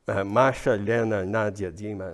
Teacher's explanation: all these nicknames of this type are two syllables the first one is stressed